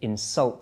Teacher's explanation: Okay, you insult somebody. So the stress there is on the second syllable.